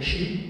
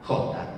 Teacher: ese sonido palatal sordo, se va a convertir en un sonido velar. Es el que explica desde luego el pasaje de sh a j, de calla a caja.